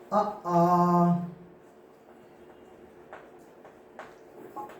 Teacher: ह्रस्व आ दीर्घ आ का उच्चारण कंठ से होता है।